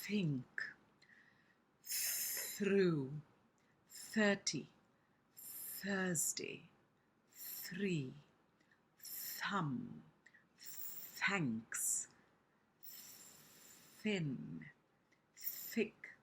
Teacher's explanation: it's not lisping. It's using the th sound which is voiceless.